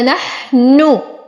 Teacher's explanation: أتم الضمة بدون تمطيط، لا أقول نحن وإنما نحن صوت قصير مقطوع